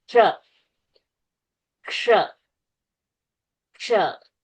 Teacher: So you try to go to say ka and then change it to sha. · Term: ksha sound